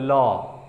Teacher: अब ल को जब बोलिएगा तो ल, जो आपकी जिह्वा है, आपकी जो जुबान है वो बैक साइड में यानी कि तालू के तरफ जाती है, मतलब जिह्वा पीछे की तरफ मुड़ती है और साइड से हवा निकलती है। जब पीछे की तरफ जीभ मुड़ती है ऊपर की तरफ तो साइड से हवा, यानी कि बगल से। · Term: पार्श्विक व्यंजन